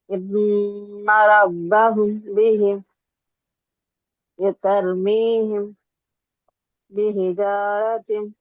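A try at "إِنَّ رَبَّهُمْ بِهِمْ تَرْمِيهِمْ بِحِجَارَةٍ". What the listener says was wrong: ఇక్కడ మీరు ఇఖ్ఫా చేయట్లేదు. ఇన్న రబ్బహుం బిహిం తర్మీహిం బిహిజారతిన్. పెదవులు కలపకుండా 2 హరకాతులు దీర్ఘం చేయాలి.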